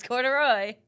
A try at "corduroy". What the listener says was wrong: You don't emphasize like the R. Corduroy. Corduroy.